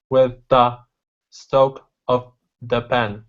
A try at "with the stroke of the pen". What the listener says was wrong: what it sounds like is that you're biting too hard on your tongue